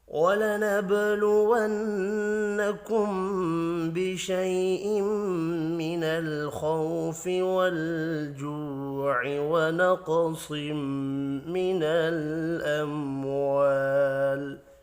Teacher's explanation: با ساکن پر قلقلہ کریں گے، نون مشدد پر غنہ کرنا ہے۔ میم ساکن کے بعد با ہے، اخفاء شفی ہوگا۔